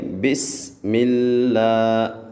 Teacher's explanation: بسم اللہ، بیٹا اس کو بسم اللہ ایسے نہیں کرنا، بلکہ بسم اللہ، سین کو آپ نے ہلانا نہیں ہے اور اس میں آپ نے سیٹی پیدا کرنی ہے۔ بسم اللہ، اور جو سا لفظ اللہ ہے اس کو ہم نے باریک پڑھنا ہے۔